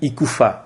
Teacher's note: le phonème F est réalisé comme une fricative labio-dentale sourde. Il s'articule la face intérieure de la lèvre inférieure rapprochée des dents du haut.